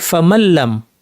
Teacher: কোরআন ফামানলাম বলি না আমরা বলি ফামালাম তাহলে আমরা কি করেছি নুনকে লাম বানিয়ে দুইটা লামকে যুক্ত করে তাশদিদ যুক্ত একটি লাম দিয়ে পড়েছি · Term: ইদগাম